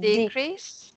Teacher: One interesting thing is that the S sounds like an S, not a Z. We have have a tendency to say it like a Z, but it's an S sound.